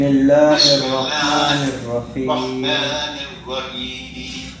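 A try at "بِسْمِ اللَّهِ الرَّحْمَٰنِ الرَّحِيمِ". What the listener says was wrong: رحیم میں نا تھوڑا سا وہ موٹا ہو جاتا ہے.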